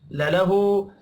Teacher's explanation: आखिर में हा के ऊपर उल्टा पेश है, एक अलिफ के बराबर खींच कर पढ़ना है।